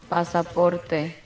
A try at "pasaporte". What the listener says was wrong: Pasaporte. Roll your R. Pasaporte.